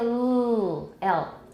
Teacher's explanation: we have a very smooth flow of air from the two sides or sometimes it's one side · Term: approximate